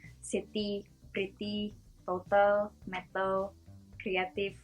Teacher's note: for Indonesians, they usually pronounce the T a little bit harder